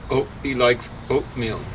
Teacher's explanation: We say the glottal stop in front of vowels at the beginning of words. So we say, oh, he likes oatmeal.